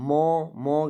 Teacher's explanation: नाक से अधिक हवा निकलती है और मुंह से कम निकलती है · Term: अनुनासिक